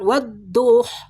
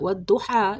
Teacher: wadduha dibaca panjang karena mat tabi'i.